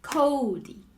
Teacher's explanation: emphasize the first syllable right so the second syllable is quieter